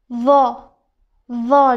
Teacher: Tilimizni uchini bu tepa tish pastki tishlarning o'rtasiga qo'ygan holda vo, vo deymiz